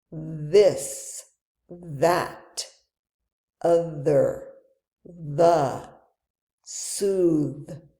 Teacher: When you say it, your vocal cords, that thing in your throat, vibrate and you should feel a humming sound. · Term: voiced sound